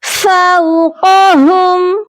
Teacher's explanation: قاف کو بھی موٹا کریں گے، اور ہا کی آواز سینے سے آنی چاہیے۔